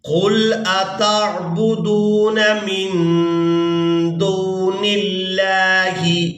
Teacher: اس کے بعد نون کو لفظ اللہ کے لام کے ساتھ ملائیں گے۔ یہاں پر ہم نے لفظ اللہ کے لام کو باریک ادا کرنا ہے کیونکہ اس سے پہلے والے حرف کے نیچے زیر ہے